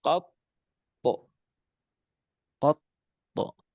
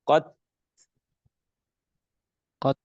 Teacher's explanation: Huruf to kalau seandainya dimatikan maka dia dipantulkan suaranya. Sedangkan huruf ta ketika dimatikan atau disukunkan maka suaranya akan berdesis, akan keluar suara hamas, hembusan nafas